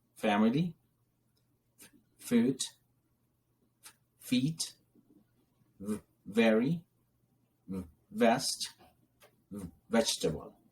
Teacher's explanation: terms here to discuss today first one is labia gentle labiadental sounds are produced with upper teeth and lower lips